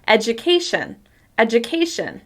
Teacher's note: My pitch rises to the stressed syllable and then falls back down afterwards.